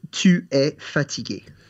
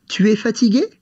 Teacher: The easiest way is to say the sentence that you want to ask and at the end of it, just raise your voice to make a question.